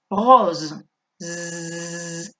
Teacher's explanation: Mirad cómo pronunció la S. Está entre dos vocales. Hay una única S. Es una S sonora.